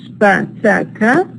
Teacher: The voiceless stops, pa, ta, ka, become aspirated in initial position.